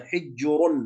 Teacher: يعني مثلا كلمة حجر عند الوصل مضمومة حجر تصبح الراء مفخمة، لكن عندما تكون في الوقف حجر، ثم سبقت الراء هذه بسكون وهو حرف الجيم، ثم سبق حرف السكون الجيم كسرة حجر، فهذه تسمى أيضا يعني عفوا هذه الراء تكون مرققة، يعني ساكنة سبقت بساكن سبقت بكسر هكذا.